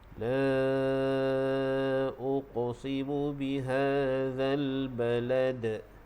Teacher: Kalau ada syaddah, namanya qalqalah akbar. Jadi hukum bacaan dia, kita kena baca dia dengan melantunkan huruf dal tersebut. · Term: qalqalah kubra